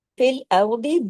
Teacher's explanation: را کو ہیوی کیجئے، دعاد کو بھی ہیوی کرنا ہے۔ را کنڈیشنل ہیوی ہے، دعاد موٹے حروف کی فیملی سے ہے۔